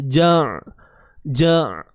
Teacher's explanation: Huruf ain, matikan ain. Dengan macam mana kaedah dia, sempitkan tengah kerongkong kita. Ja. Tak perlu kita luaskan bibir mulut kita.